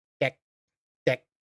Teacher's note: it's not a strong K it's a very short K deck deck You can barely hear it.